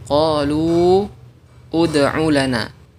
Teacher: ada waw sukun bertemu dengan dal sukun. Karena waw di sini adalah huruf mad, maka dihapus sehingga dibaca qalu ud'u lana.